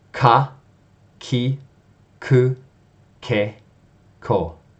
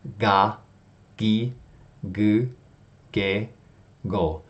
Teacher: So from the initial sound, instead of a voiceless sound, k, you're adding your voice, g.